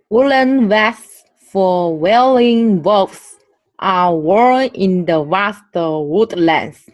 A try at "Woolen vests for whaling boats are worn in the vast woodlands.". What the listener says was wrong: Okay, you see, you were switching them around a little bit. A V, right, is a voiced sound, right?